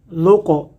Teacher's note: یہاں قلقلہ ہو رہا ہے، قاف ساکن ہو گیا